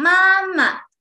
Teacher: Then the second one is 妈 Neutral tone, pronounced very soft.And weak, pronounced soft and short and weakly